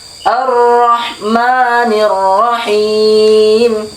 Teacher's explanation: apabila fathah ketemu rok yang bertasydid kemudian fathah maka suara roknya ditebalkan